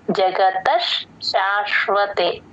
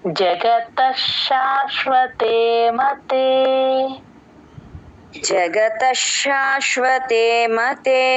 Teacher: జగతస్ త కి ష ని జాయిన్ చేసి చెప్పాలి